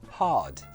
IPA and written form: hɑːd (hard)